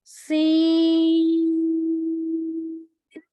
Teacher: और सीन में सीटी की आवाज आएगी।